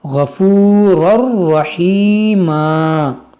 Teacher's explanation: یہاں پر دیکھیں تنوین کے بعد را ہے تو یہاں پر بھی ہم ادغام کریں گے، اس الف کو نہیں پڑھیں گے.